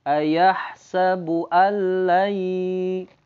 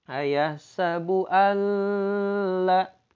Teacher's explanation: langsung nunnya masuk ke lam tanpa gunnah. Nggak boleh dibaca ayahsabu alla. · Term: idgham bila gunnah